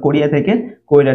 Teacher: এখানে হ্রস্বইকারটা কিন্তু আগে উচ্চারণ হয়েছে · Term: অপিনিহিতি